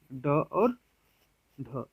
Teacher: उच्चारण करते समय जिह्वा झटके से बाहर की तरफ फेंकती है, बाहर की तरफ फेंकती है उसे उक्षिप्त व्यंजन या द्विगुण व्यंजन कहते हैं।